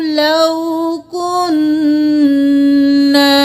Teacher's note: نون پہ تشدید ہے تو غنہ کریں گے، اور الف مدہ ہے ایک الف کے برابر کھینچیں گے. کاف پیش نون کن، نون زبر الف نا، کن نا.